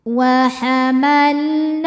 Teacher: Wa hamalnahu na hukumnya mad thobi'i muqaddar. Sebab huruf nun berharakat fathah panjang. Cara membacanya dipanjangkan dua harakat.